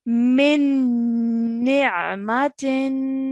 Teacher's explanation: I held on to the sound of the Noon Mushaddad, the ghunna sound, for 2 seconds before letting it go to join it to the Ain Sakin